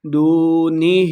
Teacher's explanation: واو مدہ ہے، اس کو ہم نے 2 حرکات لمبا کر کے پڑھنا ہے